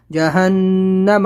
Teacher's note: جہنم غنہ کریں گے، نون کے اوپر تشدید ہے